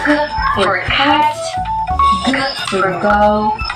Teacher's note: produced with the back of the tongue against the soft palate. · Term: velar